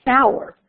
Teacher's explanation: So here you have the R as a vowel a vocalic R. So you have sour.